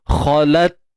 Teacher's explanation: Kha tebal. Kemudian ta yang mati kita kena selesaikan dulu sifat syiddah, iaitu tahan suara. Khalat. Kemudian baru lepaskan nafas.